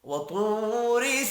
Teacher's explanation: تو واو مدہ ہے، ایک الف کے برابر کھینچ کر بھی پڑھیں گے۔ را کو زیر کی وجہ سے باریک پڑھنا ہے۔ · طا حروف مستعلیہ ہے، پر پڑھا جائے گا۔